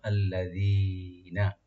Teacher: অনেকে আল্লাযীনা বলি আমরা, আল্লাযীনা এরকম না, আল্লাযীনা, জাল জিহ্বার অগ্রভাগ উপর দাঁতের অগ্রভাগ থেকে সফট হয়ে আসবে, আল্লাযীনা, এভাবে।